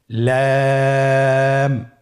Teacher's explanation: লাম লাম হরফটির মাখরাজ হলো জিহ্বার আগার কিনারা। উপরের দাঁতের মাড়ির সঙ্গে লাগিয়ে উচ্চারিত হয়।